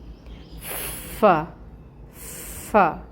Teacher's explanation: فا سب سے پہلے آ رہا ہے اور اس کے اندر ہمس ہوتی ہے جو اس کی صفت ہے، اس صفت کو لائیں گے اور زبر کی حرکت ہے، فتح کی حرکت 1 کاؤنٹ ادا کریں گے۔